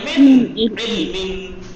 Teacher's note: مثلا دیکھیے نون کے بعد عین ہے تو یہاں پر اظہار ہوگا. من نون کو چھپائیں گے نہیں، اس کے مخرج کو من پورا کہیں گے